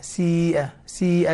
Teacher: سيئة الياء هنا مدية وجاء بعد همز في نفس الكلمة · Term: مد متصل